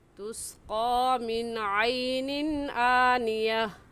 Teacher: मिन पर गुन्ना नहीं करेंगे